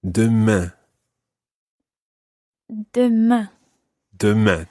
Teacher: it's really important that you try to get that nasal sound at the end of demain